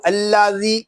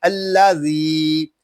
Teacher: زال کو ہم ایک الف تک کھینچ کر پڑھیں گے کیونکہ یہاں پہ یا مدہ ہو رہا ہے. اس کو الذی اس طرح نہیں پڑھیں گے، اس کو پڑھیں گے الذی.